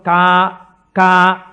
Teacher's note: కా కా పలకాలంటే ఎక్కడ పలకాలి? కంఠం దగ్గర పలకాలి.